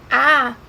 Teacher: Se vocês falarem A, vocês veem que essa boca fica totalmente aberta, a língua fica baixa e a gente não tem nenhuma obstrução de ar